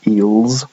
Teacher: the version of l that you get in the coda is the velarized ul, the dark L, and g is a voiced velar sound, as is ul, a voiced velar sound.